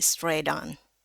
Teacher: boleh juga dibaca jadi satu tapi dia ada flap D-nya ya. Kalau mau digabung jadi satu jadi straight on.